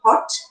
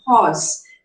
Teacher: RP has got two back vowels. You have the short O as in hot and the long O as in horse